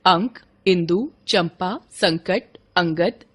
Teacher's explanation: अनुस्वार के उच्चारण में श्वास वायु नाक से निकलती है, जबकि अनुनासिक के उच्चारण में वायु नाक और मुंह दोनों से एक साथ निकलती है।